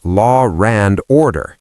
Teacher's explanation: Lara and order because I was linking law and and with an R · in the Northeast American accent, We sometimes add an R between vowels, the intrusive R.